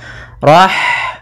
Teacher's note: kemudian Rahmani pada lafaz Rahmani ada H sukun maka di sini H mempunyai sifat yaitu sifat Hames maka alirkan nafas kita